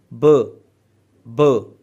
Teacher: अब ब जब आप प्रोड्यूस करते हैं तो आपकी जो वॉइस है उसको एक स्टॉप लगता है, यानी कि एकदम से रुकती है और फिर एकदम से वो बाहर आती है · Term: स्टॉप्स